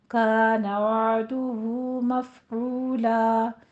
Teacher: وعدہ میں وسط حلق سے عین ادا کریں گے. دال کے اوپر ضمہ ہے، ہونٹ گول کیجیے.